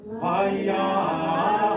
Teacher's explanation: That sounds like the accent is going on to the as. So in the context of what I was reading around other words, I might actually prolong that ya so that it gets one more musical note, and then do the as as the last syllable as an afterthought kind of thing.